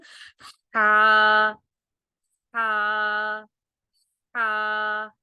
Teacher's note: یہ جو ہا ہے یہ ہمارے حلق کے درمیان سے نکلتا ہے، اور ایسے نکلتا ہے جیسے نکالتے ہوئے کوئی ہوا سی بھر جاتی ہے منہ میں